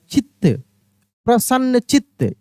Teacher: अब देखिए ची, च में छोटी की मात्रा और त और फिर एक और त, कहने का मतलब यहाँ पे त पे जोर लग रहा है, चित्त, प्रसन्न चित्त, इस तरीके से।